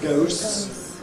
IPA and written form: gəʊs (goes)